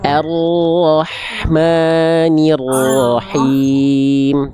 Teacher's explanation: Sekarang ro-nya getarannya kurangi, terlalu banyak.